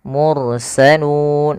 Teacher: rnya tebal karena dia huruf ro didahulu dengan huruf damah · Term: ro-nya tebal